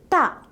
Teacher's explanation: In the production of this sound, the air current coming from the lungs is stopped when the tip of the tongue is curled back and made a contact the roof of mouth. When the contact is released, the air escapes from the mouth with slight explosion. The sound of this letter is Ta.